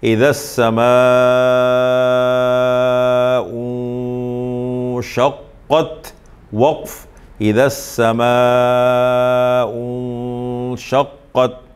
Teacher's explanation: نون ساکن کے بعد شین ہے تو اخفاء حقیقی ہوگا. 15 حروف اخفاء میں سے آ جائے.